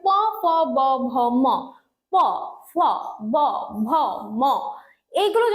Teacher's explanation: যখন আমি উচ্চারণ করছি দুইটা ঠোঁট একসাথে লেগে বায়ুপথে বাধা সৃষ্টি হচ্ছে তাহলে উপরের ঠোঁট এবং নিচের ঠোঁট দূরের ঠোঁট কাছাকাছি এসে বায়ুপথে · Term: অষ্ট ব্যঞ্জন